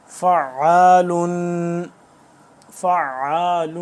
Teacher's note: آخر میں غنہ کرنا ہے کہ تنوین ہے